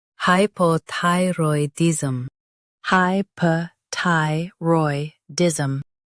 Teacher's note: Hy, p, ty, roy, diz, hypothyroidism. Stress ty and keep hypo soft.